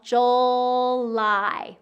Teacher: we have that j, it's a burst sound. And then we have a dark L, July. We get that long I at the end of the word.